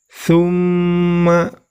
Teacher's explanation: terdapat mim tasydid, maka itu termasuk bacaan gunnah. Maka cara membacanya ditahan dan diperpanjang.